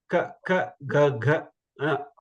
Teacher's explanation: this ka varga is called kantya, from your throat. Ka, when you pronounce, you can keep your finger on your throat and say ka, ka, ga, ga.